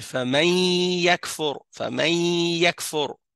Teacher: il y a le ya et le noun il se fusionnent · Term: idgham